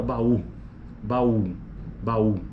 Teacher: E a acentuação tônica, inclusive, está no U, né? A vogal mais forte nesse caso ali.